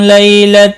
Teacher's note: یا لین ہے، تھوڑا نرمی کے ساتھ کھینچ کر ادا کریں گے